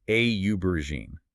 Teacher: With aubergine, we need to make sure the stress is on that first syllable